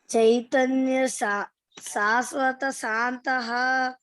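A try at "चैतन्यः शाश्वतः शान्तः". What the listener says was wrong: All Sha should be little, must pronounce little heavily. Chaitanya Shashwata Shantah. Because Visarga is there, no? Before that Sha. So it has to be pronounced double. Sha. Shashwata Shantah.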